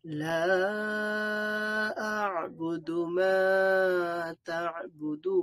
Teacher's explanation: মা বলবো 1 আলিফ টান, তা'বুদু দু এর মধ্যে 3 আলিফ টানতে হবে।